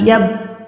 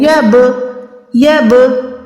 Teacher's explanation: با پہ میں نے آواز کو لوٹایا، باؤنس بیک کیا